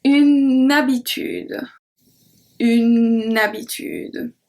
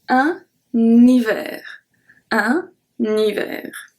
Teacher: H muet act as a voyelle, so we do link the word.